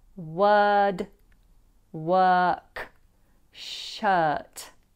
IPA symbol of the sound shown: ɜː